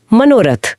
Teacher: और बाद में कोई सघोष व्यंजन हो जैसे रथ का र तो विसर्ग और उससे पहले का अ दोनों मिलके ओ की मात्रा बन जाते हैं। तो मनः का अ बदलकर ओ हो हो गया।